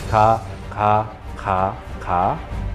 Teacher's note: you make it a little bit more aspirated. So by that I mean you add a little bit more air and explosion.